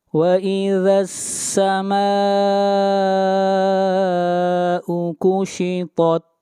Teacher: یہاں پر مد متصل ہے، اس مد کو 3 الف کے برابر کھینچ کر پڑھیں گے